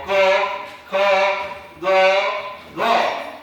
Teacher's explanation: क वर्गाच कंठ म्हणजे कंठातून त्याचा उच्चार होतो